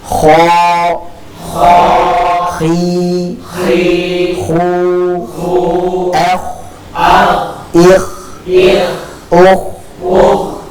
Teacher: Dia dari segi aliran suara dia mengalir. Dan juga memiliki sifat hams, dari segi aliran nafas dia pun mengalir. Jadi kita alirkan ketika dalam keadaan sukun akan lebih jelas, dan ketika berharokat pun sebenarnya sudah memiliki aliran suara dan aliran nafas tersebut.